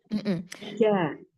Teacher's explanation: Dia tengah lidah bertemu langit-langit yang tengah. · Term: makhraj jim